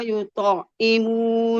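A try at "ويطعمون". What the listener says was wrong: Jangan dijeda, Bu. Jangan wa yut'imu bukan jeda itu. Dia langsung wa yut'imu gitu.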